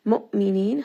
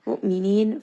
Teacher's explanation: Hamza here is going to have jahar. Make sure that it is having that abrupt stop inside of the throat. Mu'minin, 4-count mad.